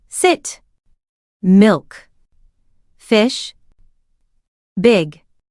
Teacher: The tongue is raised near the front of the mouth, but not touching the teeth. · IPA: /ɪ/